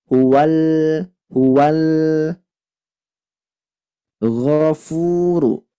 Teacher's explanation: huruf gho ini tebal tadi ya tidak boleh tebalnya karena bibir tapi tebalnya karena lidah